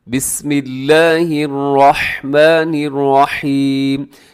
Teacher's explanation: لفظ اللہ باریک ہوگا